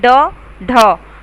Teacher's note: ऊपर उठकर मुड़कर तालू को लगती है तथा फिर झटके से पीछे हट जाती है